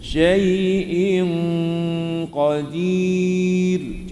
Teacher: semasa tuan-tuan dengung in itu, lidah bersedia dengan keadaan huruf qaf.